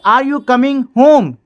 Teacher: yes or no questions have a rising tone at the end। yes और no question के अंत में क्या होता है, राइजिंग टोन, यानी कि आवाज मेरी उठती है, ठीक है।